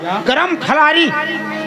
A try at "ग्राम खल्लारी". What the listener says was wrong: अबे गरम नहीं बोला जाता है, ग्राम खल्लारी। ऐसे बोलो।